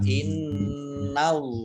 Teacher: Inna nunnya dibaca tasdid mendengung, ada tasdidnya dibaca mendengung ditahan 2 harokat. Innallaha Allahnya dibaca tebal karena harokat di depannya alif, harokat di depannya fathah. Kemudian lam fathah berdiri matobi'i panjang 2 harokat.